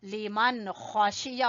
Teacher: नून के साकिन के बाद खा गले के सबसे ऊपर वाले हिस्से से अदा होगा